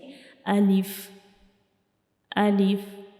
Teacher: तो अलिफ को हम अपने मुंह के खाली हिस्से से पढ़ते हैं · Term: अलिफ का मखारिज